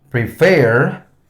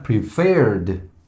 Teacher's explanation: Cuando tenemos verbos regulares de dos sílabas, donde su sonido más fuerte está al final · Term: stressed syllable